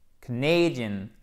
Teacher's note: accent tonique sur la deuxième syllabe avec une diphtongue A